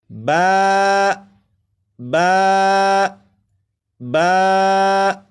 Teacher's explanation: बा को 1 अलिफ के बराबर खींच कर पढ़ेंगे।